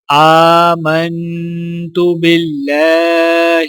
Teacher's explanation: اللہ کے لام کو باریک پڑھا جائے گا